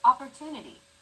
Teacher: The stressed syllable to in opportunity is deemed more important, so it's pronounced longer than all other syllables.